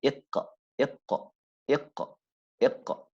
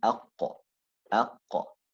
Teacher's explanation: the elevation is weakened when these letters carry a kasra